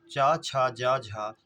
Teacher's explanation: च, छ, ज, झ, ये आपका स्पर्श संघर्षी है।